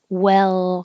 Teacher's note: well the important part of this very short word is well keeping your tongue in the L position for a little longer time than you probably think you need to so that the L can be heard